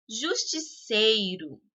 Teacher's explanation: a sílaba sei é a de maior intensidade. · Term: sílaba tônica